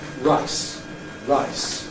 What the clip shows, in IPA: raɪs